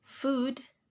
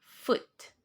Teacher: Pada food itu menggunakan long vowel. Sedangkan foot menggunakan short vowel, yaitu u.